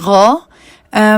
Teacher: یہ ہمارے گلے کے اوپر والے حصے سے ادا ہوتا ہے. اس حرف کو ادا کرنے کے لیے زبان جب نرم تالو کے اس حصے کے ساتھ لگتی ہے جس کو ہم کوا کہتے ہیں تب یہ حرف ادا ہوتا ہے. زبان کوے کو یعنی کہ یوویلا کو جہاں پر ٹچ کر رہی ہے وہاں پر آپ کو ایک وائٹ کلر کا ڈاٹ نظر آ رہا ہوگا. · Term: غین